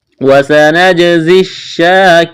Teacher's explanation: جیم پر قلقلہ کریں گے، زا میں سیٹی کی آواز پیدا کریں گے